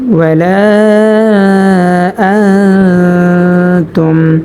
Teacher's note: আমরা এখানে দেখতে পাচ্ছি যে নুন সাকিনের বামে তা আসছে, সেজন্য আমরা গুন্নার সহিত নাকের ভিতর লুকায়া পড়ব।